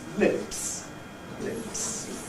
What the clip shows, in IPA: lɪps